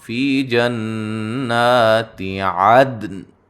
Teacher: عدن جب وقف کریں گے بڑی توجہ کے ساتھ دال کو ہلا کے قلقلہ کرتے ہوئے نون کو ساکن کریں گے۔ ٹھیک ہے، دال پہ قلقلہ کرنا ہے، نون کو ساکن کر دینا ہے، اور بڑا اہتمام، فی جنات عدن۔